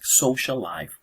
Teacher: the L of this social at the end and L at life at the beginning just become one L · It means that when there are two words and the first word finishes in the same consonant sound or the same vowel sounds, then the next word, like for example in this case, like social life, those double L, the L of the social at the end and L at life at the beginning, just become one L. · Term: Geminates